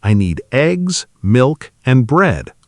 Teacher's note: And there's also a specific pattern for lists where each item usually rises slightly except the very last one which falls signaling the list is complete